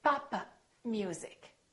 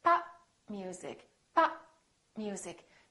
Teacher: So, I didn't release my lips. I said pop.